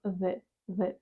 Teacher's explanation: ваш язик просто прикладається до верхньої щелепи зубів і виходить такий звук з з Тобто це не є з